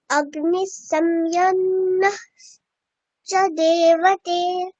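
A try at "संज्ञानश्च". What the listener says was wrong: সংজ্ঞানশ্চ, ওই বিসর্গটাকে আমরা সন্ধি করে একসাথে করে চ বলবো, তালব্য স বলবো একটা। অগ্নি সংজ্ঞানশ্চ দেবতে,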